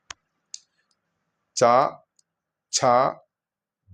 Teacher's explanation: അത് നാവ് നമ്മുടെ താലവ്യം എന്നാൽ നാവിന് നേരെ മുകൾ ഭാഗത്ത് നാവ് അമർത്തി വെച്ചുകൊണ്ട് ഉച്ചരിക്കേണ്ടതായതിനാൽ ഇതിന് താലവ്യ ശബ്ദങ്ങൾ എന്നാണ് പറയുക.